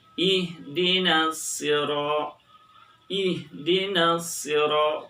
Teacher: Di ayat 6 ini biasanya cenderung kesalahan terjadi dalam mengucapkan huruf shad berharokat kasrah. Orang biasanya sering beralih pengucapannya dari shad menjadi huruf sin. Ihdinas sira, ihdinas sira, padahal itu ada huruf so.